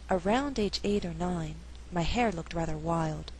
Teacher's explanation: an alternative reading would stress only hair and wild in the second half of the sentence